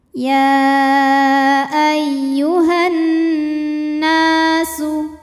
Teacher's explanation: Nunnya disebut dengan wajibul gunnah atau gunnah musyaddadah atau nun musyaddadah karena nunnya bertasydid. Cara bacanya dengung, bunyi n-nya tahan sampai ada suara masuk hidung kurang lebih 2 harokat.